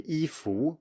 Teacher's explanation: most people I know in Taiwan actually do say 衣服 with a rising tone on 服